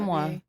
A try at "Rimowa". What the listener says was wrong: No, there's an O in there. Rimowa.